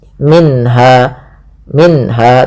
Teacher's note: ada bacaan izhar halqi yaitu suara nunnya dibaca dengan jelas